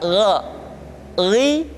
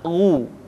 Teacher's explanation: Perhatikan posisi mulut kita ketika mengucapkan dalam keadaan fathah, tidak dimonyongkan wo, tapi terbuka ra, ri, ru. Ketika dhammah baru bibir kita dimonyongkan sehingga keluar vokal u dengan sempurna.